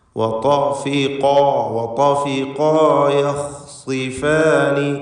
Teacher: ഖാഫിൻ്റെ അലിഫ് ഇവയ്ക്കൊക്കെ തഫ്ഖീമാണ്, തടിപ്പിച്ച് സ്വരഭാരത്തോടെ ഉച്ചരിക്കേണ്ടവയാണ്